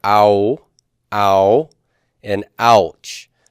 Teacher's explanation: in the word ouch in English, we have the ah and the oo sound coming together, ow, ow, and ouch. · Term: diphthongs